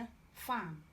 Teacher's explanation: F, f is labiodental fricative